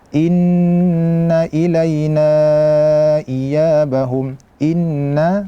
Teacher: ini Nun bertasdid maka posisi gunahnya adalah yang paling sempurna in jadi atupun suara yang dari hidung itu diaalah yang paling